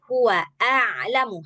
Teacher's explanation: Hamzah dulu baru a. Dari pangkal dulu baru ke tengah tenggorokan. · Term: hamzah dulu baru ain